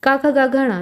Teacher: उन सभी का उच्चारण कहां से कंठ से होता है कंठ यानी की गले